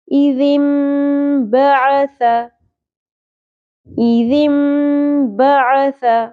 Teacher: نون کی آواز، نون ساکن کی آواز میم میں بدل جائے گی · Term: اقلاب